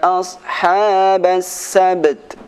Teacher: Nah, di sini ada huruf ba mati dan huruf ta mati. Maka sifat qalqalah pada huruf ba dan sifat hamz pada huruf ta, dua-duanya harus dibaca dengan sempurna